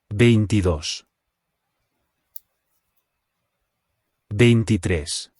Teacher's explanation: there is an accent on the o. So the stress is where the accent is on the last syllable.